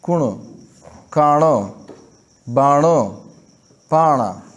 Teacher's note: د دې لفظونو کې نون نه خو د خپل مخرج نه ووتو او نه یې په وروستو والا حرف کې ادغام وشو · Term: اخفای حقیقي